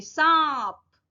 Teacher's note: चंद्रबिंदु इसमें mouth open होता है नाक से और गले से आवाज आई है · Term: अनुनासिक